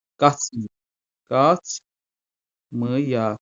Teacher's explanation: açıq sait olan A tələffüz zamanı I-ya, yəni qapalı saitə keçəcək